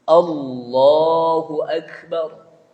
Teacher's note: A-nya juga lafaz Allah, namanya lafzul jalalah, itu dibaca tebal. Tafkhim.